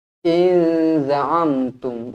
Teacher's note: Nun kosong bertemu dengan zai ikhfa hakiki dengung dua harokat.